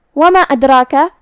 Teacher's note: مد جائز منفصل ہے تو ہم اپنی آواز 2 سے 4 مد کے برابر لمبی کریں گے